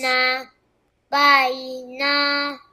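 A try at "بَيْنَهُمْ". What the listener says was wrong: Bukan hu. Ustaz dengar hu tau. kena rapat bibir. Hum. Tengok bibir Ustaz. Hum.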